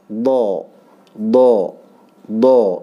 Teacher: Do ini dia tepi lidah ya, sisi lidah ya. Entah yang kiri atau yang kanan terserah itu menyentuh daripada geraham ya. Do ya, geraham atas ya. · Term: huruf do